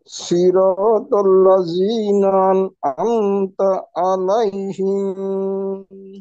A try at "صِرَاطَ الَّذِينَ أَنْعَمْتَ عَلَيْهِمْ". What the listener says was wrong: হিম হিম টান নাই।